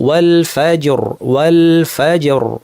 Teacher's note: থেমে যাওয়ার কারণে আমরা র সাকিন পূর্বে সাকিন ইয়া ছাড়া অন্য এবং তার পূর্বে জবর থাকায় ভারী করব